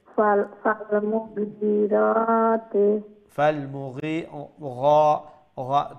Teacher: গাইনটা গর মতো না, ওইটা গলার উপর অংশ থেকে উচ্চারণ হবে, আর এটার মধ্যে একটা মসৃণতা থাকবে।